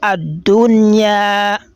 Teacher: the ya onto it has been elongated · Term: al-madul asli